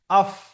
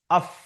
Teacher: উপরের দাঁত নিচের ঠোটের যে ভিজে অংশ আছে এখানে লাগবে